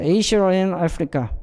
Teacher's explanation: intrusive R이라고 하는 것은 뭐냐면 거기 데이터를 보면은 A, B, C, D에 A에 보면은 아시아하고 and 하면 여기 R 사운드 자체가 아시아도 없고 아시아에도 없고 and에도 없잖아요. 근데 모음과 모음이 만나기 때문에 그때 사이에 자연스럽게 끼어드는 침입하는 소리가 있으니 그게 바로 R 사운드다